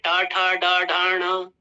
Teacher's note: आपकी जीभ जो है आगे से हल्की सी ऐसे मुड़ जाएगी और ऊपर की तरफ टकराएगी